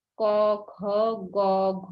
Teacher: উচ্চারণ স্থান হলো কণ্ঠ বা জিহবা মূল